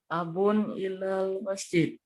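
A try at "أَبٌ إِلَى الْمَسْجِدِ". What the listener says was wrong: Nah, abun ilal masjidi ya. Jadi tunjukkan kasroh ya.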